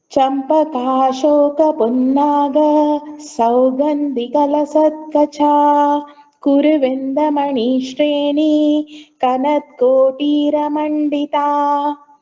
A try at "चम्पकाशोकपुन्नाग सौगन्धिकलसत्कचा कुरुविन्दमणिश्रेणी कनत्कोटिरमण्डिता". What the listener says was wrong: you have to chant these 2 lines without taking a pause.